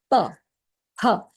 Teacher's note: Last part is the easiest part which is labial which is you using your lips